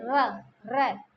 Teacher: जो हम बोलते है जीव में कंपन सा पैदा होता है जैसे र र बिना र के बोला बिना कंपन के बोला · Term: लुंठित